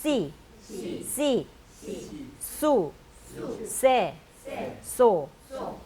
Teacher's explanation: 위에 씨자는 씨라고 이렇게 이빨에 거의 혀가 안 붙으면서 씨 하시면 되고요. 밑에 C 할 때는 영어에 비타민 C 할 때 이빨에 약간 혀가 붙으면서 C 하시면 됩니다.